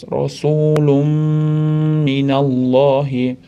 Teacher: tanvinda mimni ichiga kirgazib g'unna qilib ushlab turamiz. To besh deguncha ushlab tursa bo'laadi. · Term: g'unnali idg'om